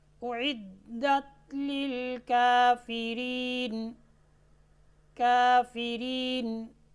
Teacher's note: میں کسر کے ساتھ 1 الف کی مقدار میں یہاں پر مد کر رہا ہوں